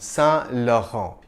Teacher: The two N's aren't really pronounced. You just nasalize the preceding vowel sound